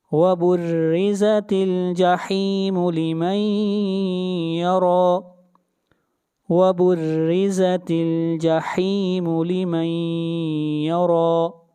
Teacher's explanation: را کو ایک الف کے برابر کھینچ کر پڑھیں گے